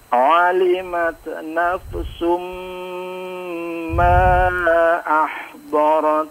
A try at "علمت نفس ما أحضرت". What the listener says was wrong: Ya, afwan, itu sukun-sukunnya agak memantul pada dat ya. Nah, diperhatikan. Alimat nafsun ya.